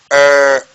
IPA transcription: ɜː